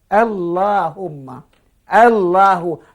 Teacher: Lamnya tebal tapi hamzahnya tipis.